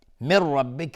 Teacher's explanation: نون ساکن بشه را ادغام بدون غنه